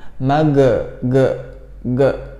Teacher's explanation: kalau ge itu di lidah ya, di lisan, bukan di tenggorokan. Ge. Jadi posisi lidah yang belakang itu menempel dengan langit-langit ya.